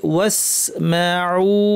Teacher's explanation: ওয়াকুলুনজুর র ভারী, ওয়াকুলুনজুরনা, না টানতে হবে, ওয়াসমাউ টেনে থামতে হবে। এটা কিন্তু মাদ আরিদ না, এটা একালিফি থাকবে, কারণ এখানে মাদ্দের হরফের পরে কোনো সুকুন আসেনি।